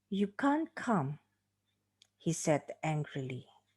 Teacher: Here you can see that the significant fall is on the word come, and the connecting passage he said angrily will be treated as the tail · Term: falling intonation